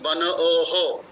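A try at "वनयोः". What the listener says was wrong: বনয়োহ, বনয়োহ, ওহো নয়, ওহো নয়, ইয়োহ, বনয়োহ।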